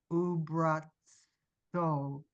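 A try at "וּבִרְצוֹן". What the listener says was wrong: Well, first of all, what's the second letter? It's a vet. No, it's a vet and then a resh.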